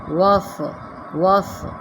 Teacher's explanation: اس کو وس سین کی سیٹی میں نہیں لے کر آتے، صاد مستعلیہ حرف ہے، موٹا پڑھیے گا